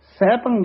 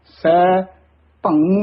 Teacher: ਅਜੂਨੀ ਵੱਖਰਾ ਬੋਲਣਾ ਹੈ ਸੈਭੰ ਇਕੱਠਾ ਕਹਿਣਾ ਹੈ। ਸੈ ਭੰ ਨਹੀਂ ਕਹਿਣਾ ਹੈ। ਸੈਭੰ ਜਾਂ ਕਈ ਗਗਾ ਲਾ ਦਿੰਦੇ ਹਨ ਸੈਭੰਗ ਕਹਿ ਜਾਂਦੇ ਹਨ ਇਹ ਤਾਂ ਬਿਲਕੁਲ ਹੀ ਅਸ਼ੁੱਧ ਹੈ।